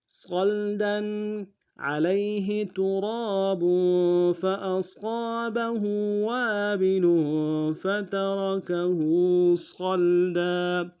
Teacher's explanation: فترکہ صلدا صاد کو لام کے ساتھ ملانا ہے، صاد کو موٹا ادا کریں گے، لام ساکن غنہ نہیں ہوگا، دال کے اوپر تنوین ہے، غنہ کریں گے.